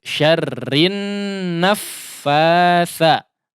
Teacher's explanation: ada huruf nun yang tasydid sehingga di situ digunnahkan dengan gunnah yang panjang